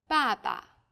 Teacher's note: there's a neutral tone this is very light weak and short